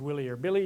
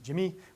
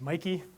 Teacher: a standard way to change a man's name into a boy's name is to add a high front vowel at the end